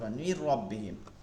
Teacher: এই যে মিন নুন সাকিনের পরে র আছে, এখন এই রকে ধরে পড়ব, কিন্তু গুন্না করা যাবে না। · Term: ইদগমে বেলাগুন্না